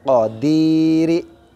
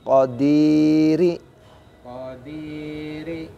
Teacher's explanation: Ko-nya pendek. Qadiri. Panjangnya di di.